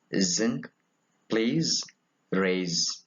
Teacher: It is a voiced alveolar fricative.